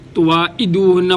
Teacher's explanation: ستذکرونہن، ہا، 2 آنکھوں والی ہا، ستذکرونہن ولکن لا، کاف باریک، ولکن لا تواعدوہن، تا، تا باریک، تواعدوہن، واو پہ ہونٹ گول، تواعدوہن، عین گلے کے درمیان سے